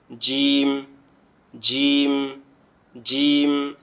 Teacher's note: জিমটা আমাদের জিহ্বার মধ্যখান দিয়ে উপরের অংশে লাগবে, লেগে উচ্চারিত হবে জিম, জিম, জিম, এভাবে উচ্চারিত হবে।